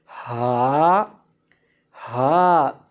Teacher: ہا ادا ہوتا ہے حلق کے آخری حصے سے جو سینے کے ساتھ متصل ہے، وہاں سے ہا کو ادا کیا جاتا ہے۔